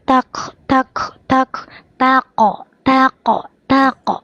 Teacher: Jahar. Tidak boleh ada hembusan napas. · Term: Kop jahar